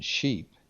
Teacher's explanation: The SH sound, as in sheep, we say is unvoiced palatal, and the SH sound, as in measure, or the sh sound, I should say, as in measure, is a voiced palatal.